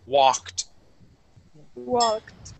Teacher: this L in the word walk is silent